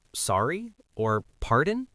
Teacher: sorry or pardon with a rising intonation like a question